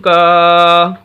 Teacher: کاف کے آگے الف ہے اور یہ الف مدہ ہے، اس وجہ سے کاف کو ہم لمبا کر رہے ہیں